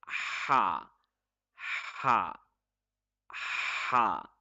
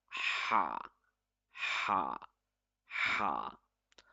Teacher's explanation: Ha is read from the middle throat. It should be read with force. It should be as sharp as a sword. It is a light letter.